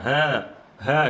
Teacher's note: Ha ni pita suara kita dia terbuka sikit saja. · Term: Hams